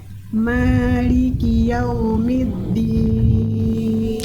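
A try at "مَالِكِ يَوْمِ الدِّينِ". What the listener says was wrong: Keren, Masya Allah.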